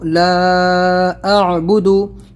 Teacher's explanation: اس میں مد بہت ہے، مد آپ کو کھینچنا ہے اور عین نکالنا ہے